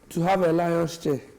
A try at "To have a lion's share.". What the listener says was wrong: To have a lion's share. Not, are you saying chair or share? Your teacher might have said lion's share.